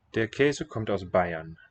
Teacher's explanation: the R in the name, Bayern, is not sounded as a consonant